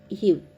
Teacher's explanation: கீழிதழும் மேல்வாய் பல்லும் இணைவதால் பிறக்கும் எழுத்து